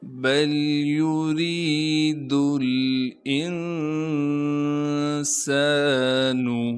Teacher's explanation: یا کو بغیر کھینچے پڑھیں گے، را کے نیچے زیر ہونے کی وجہ سے را کو باریک کر کے پڑھیں گے، اور را کے بعد یا مدہ ہونے کی وجہ سے را کو ایک الف کی مقدار کھینچیں گے